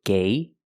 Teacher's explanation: the first G is a hard g-g sound followed by the long a